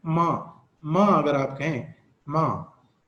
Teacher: तो ये bilabial nasal sound है, क्योंकि इसमें आवाज में नाक से हवा जो है वो रिलीज होती है साथ साथ, और नाक इसमें रोल प्ले करता है।